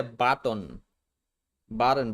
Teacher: And notice how the T consonant changes to a stop T. The vowel is omitted. · In button, the final syllable contains a final unstressed T plus N combination. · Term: syllabic N